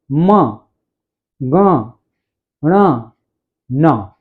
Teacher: देखिए, या मंगणना नाम नासिका च, अर्थात या म ग ण न, इन वर्णों का उच्चारण स्थान है नासिका, क्योंकि नाक का उपयोग करते हैं, मुंह के साथ साथ नाक के बल पर बोलते हैं। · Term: नासिका वर्ण